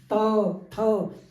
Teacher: दंत्य यानी कि दांतों से त, थ, जीभ जो है वो हमारी दांतों से टकरा रही होती है। तो इसीलिए इनको दंत्य व्यंजन भी बोलते हैं।